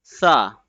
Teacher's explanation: The tip of the tongue will be touching at the edge of the upper front two teeth very gently and softly in the letter Sa.